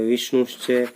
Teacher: विष्णु धन च है, विष्णु धन च, विसर्ग आ गया, विसर्ग के बाद में च आ गया, इसलिए विसर्ग का तालव्य श बन जाता है, या विसर्ग हो तालव्य श में परिवर्तित हो जाता है।